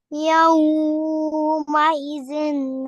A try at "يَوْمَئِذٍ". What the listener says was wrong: हरूफ लीन को नहीं जूम करना। यौमئذ